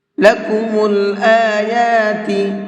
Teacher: حمزہ کو بھی اور یا کو بھی دونوں کو کھینچ کر کے پڑھیں گے، اس لیے کہ دونوں کے اوپر کھڑا زبر ہے۔